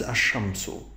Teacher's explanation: I have to avoid that al and straightly go to the sheen, and that's ash-shamsu. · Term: merging